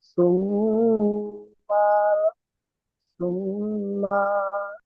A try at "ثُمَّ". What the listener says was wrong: সোম্মা বলে টান দিচ্ছেন, মিমের উপর যাবার আছে, টান হবে না। সোম্মা